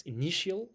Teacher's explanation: The second syllable is stressed.